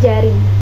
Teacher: dibentuk dengan cara seperti pembentukan C, tetapi pita suara dengan keadaan bergetar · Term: konsonan afrikat palatal J